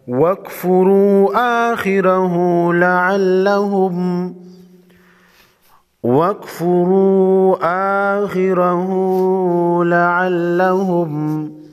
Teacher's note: را پر پیش ہے، را کو موٹا پڑھیں گے،